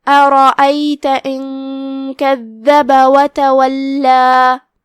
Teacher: کلمت تولا میں یہاں لام پہ تشدید ہے تو اس کا دھیان رہے، اور آخری میں ہم اپنی آواز 2 مد کے برابر کھینچیں گے